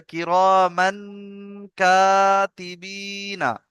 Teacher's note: মানটা গুন্না দেন, নাকে তুলে একালিপ গুন্না করতে হবে,